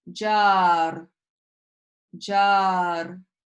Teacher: The tongue does slightly trill at the roof of the mouth when you pronounce that. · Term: letter ra